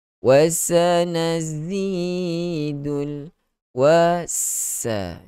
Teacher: Kedua-dua huruf sin dan zai ni dia ada sifat safir. Dia ada sifat desiran, geseran ketika kita menyebut huruf itu.